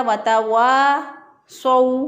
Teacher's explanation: वतवासौ, स्वाद ज़बर वाव सौ, वाव साकिन पहले वाले हरफ पर ज़बर हो तो वाव लीन होता है, तो इसको नरमी से, आसानी से, जल्दी से पढ़ेंगे, लंबा नहीं करेंगे